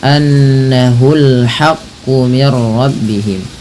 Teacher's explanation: Lagi-lagi ada ghunah pada lafal nun berharakat tasdid. Tahan bunyinya.